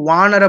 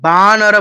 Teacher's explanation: তো অন্তঃস্থ ব উচ্চারণটা হচ্ছে ওয়া, ঠিক আছে? ওয়া, বা নয়